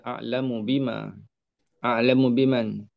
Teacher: Mim bertemu dengan ba. Matikan mim. Kemudian terus ke ba. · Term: idgham kabir